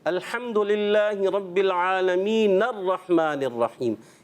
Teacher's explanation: جب ہم اس کو ملاتے ہیں تو پڑھتے ہیں الحمدللہ رب العالمین الرحمن الرحیم. یہ جو الرحمن الرحیم ہم نے پڑھا درمیان میں آنے کی وجہ سے یہ حمزہ گر گیا, اس کو حمزہ وصلی کہتے ہیں.